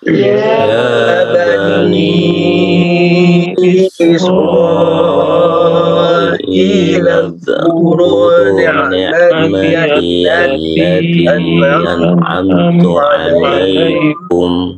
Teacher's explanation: Mad jaiz ya, mad jaiznya allati 4 harokatnya agak ditahan